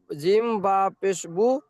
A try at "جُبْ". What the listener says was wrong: হুম, বু হবে কেন? তাহলে জিমটা কোথায় যাবে?